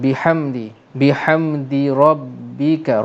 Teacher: Ra tebal kerana ra berbaris atas.